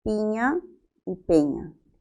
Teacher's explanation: Bien, la oposición se está dando entre la I y la E. Bien, según el desplazamiento horizontal es el mismo. Ambas son anteriores.